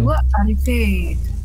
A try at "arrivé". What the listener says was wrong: Tapi di pronunciasinya nggak ada beda ya. Jangan dipanjangin gitu. Jangan arrivé. Jangan gitu. Biasa aja. Emang ke bahasa Perancis gitu. Kalau di tulisan dia detail banget jadinya. Ketahuan gitu. Ini maskulan, feminan, gendernya apa gitu. Itu ketahuan banget. Kalau di pronunciation enggak.